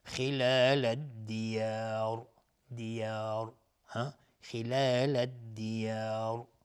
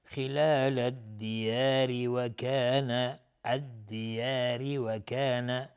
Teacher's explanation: الدیار الف لام شمسی و الدیار اگر توقف کردیم با سکون را و الدیار میشه مد عارض سکون به مقدار 2 یا 4 یا 6 حرکت میتونیم مد بدیم و را هم اینجا دیگه حکمش استعلا میشه چون ساکنش کردیم